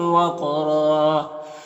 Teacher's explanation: यहाँ पर दो ज़बर वक्फ करेंगे तो एक ज़बर के साथ अलिफ पढ़ेंगे और रॉ को पुर पढ़ेंगे